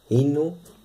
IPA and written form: h|(i)nu ((h)inu)